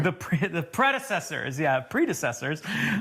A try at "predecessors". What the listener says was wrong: Now it sounds like you said predator. The predators.